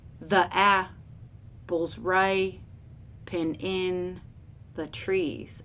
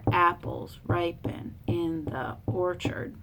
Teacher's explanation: I'm turning that all into iambs where it's unstressed, stressed.